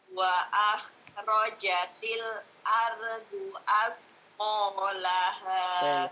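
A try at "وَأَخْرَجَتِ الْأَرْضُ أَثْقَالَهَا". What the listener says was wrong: Kha-nya wa akhrajatil ardu. Ra-nya tebal juga.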